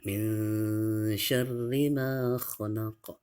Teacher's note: Ma ini atau mim ini menjadi panjang 2 harokat karena ada alif.